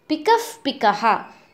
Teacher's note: Pikaha plus Pikaha becomes Pikaf Pikaha with a sound F in between wherever there is a Upadmaniyaha